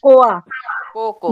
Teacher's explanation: Co, the initial co sound will be prominent. The second co sound will be less prominent.